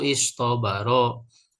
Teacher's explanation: Nah, ini namanya huruf itbaq. Shod, dot, to dan zo wajib ibdaluhu to'an wajib menggantinya merubah ta jadi to.